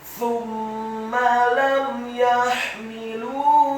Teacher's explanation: huruf sa-nya dibaca tipis, tarqiq, lidahnya agak keluar sedikit, dhammah satu harokat. Huruf mimnya ditasydidkan, fathah satu harokat.